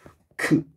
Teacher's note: 기역에다 히읗을 합하면 어떻게 되겠어요? 그에다가 흐를 추가하면 크 이렇게 되겠죠. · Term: 거센 소리